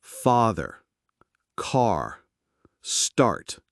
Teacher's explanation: your mouth is wide open and your tongue is low and flat. It's a very relaxed sound.